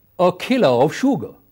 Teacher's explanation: You will see that kilo in first and sugar, they are more prominent than all. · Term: stress